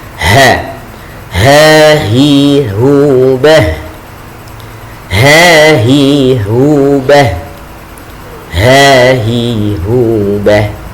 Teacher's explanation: Ha keluar dari tenggorokan bagian bawah. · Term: huruf ha